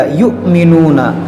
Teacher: یہ حمزہ ساکنہ ہے، اس کو ہم نے جھٹکا دیا